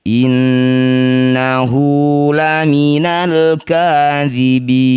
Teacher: Inna nun bertasydid disebut bacaan ghunah musyaddadah. Dengungkan dua harakat. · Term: gunnah musyaddadah